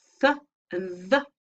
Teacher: involves the tongue tip and the back of the upper teeth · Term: Dental